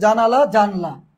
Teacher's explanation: জানালা, এখানে একটা আ ছিল, সেই আটা বাদ গিয়ে এখানে হসন্তর মতো উচ্চারণ হয়ে একটা আ লুপ পেয়ে গেছে। এটা হচ্ছে সম্প্রকর্ষ বা স্বরলুপ।